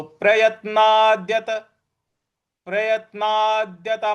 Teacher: ना के बाद जो द है उस पर भी हमको आघात देना है